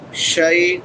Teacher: شین حروف شجریہ میں سے ہے اور شین کے بعد یا لین ہے ، یا ساکن ما قبل فتحہ ہے، رقیبا را پر پڑھی